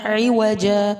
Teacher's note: یہاں پر اس کو عواجا نہیں پڑھیں گے، واو پر صرف زبر ہے، عوجا، ایک زبر کو ڈراپ کر کے وقف کریں گے۔